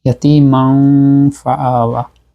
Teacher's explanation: তানবিনের মাখরাজটা চলে গেছে পরের হরফের মাখরাজে, মানে ফার কাছে চলে গেছে · আর আমরা নাক দিয়ে উচ্চারণ করবো, খাইসুম, গুন্না হবে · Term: ইখফা